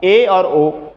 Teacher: ए ओ का उच्चारण करिए तो आधा मुख हमारा बंद हो जाएगा। ये देखिए आधा बंद है, ओ आधा बंद है, आधा खुला है, अतः ये अर्ध समृत हैं।